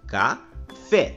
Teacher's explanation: Na palavra café, a sílaba que nós pronunciamos com mais intensidade é a sílaba fé, pois nós falamos café. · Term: sílaba tônica